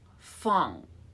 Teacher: This is actually NG sound, okay? So it's made at the back of the tongue.